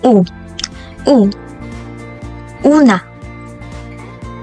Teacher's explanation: ang patinig na U ay nabibilang sa palikod na pataas na posisyon na bahagi ng dila